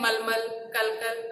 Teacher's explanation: अंतिम अ का उच्चारण यहाँ पर नहीं होता, इसमें अंतिम और अ का उच्चारण जो है नहीं होता।